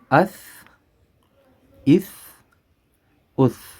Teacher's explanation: یہ جو زبان کا آگے والا حصہ ہے یہ اوپر والے 2 دانتوں کے ساتھ لگے گا، اس اس اس۔